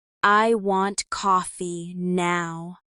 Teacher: Stress is on want and now. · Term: sentence stress